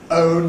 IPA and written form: əʊn (own)